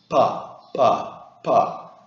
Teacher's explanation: make this sound po without a puff of air afterward hold a hand up to your mouth and try not to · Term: unaspirated P